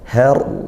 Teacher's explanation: Har ra sukun didahului fathah ya, maka dibaca tafkhim tebal ra sukunnya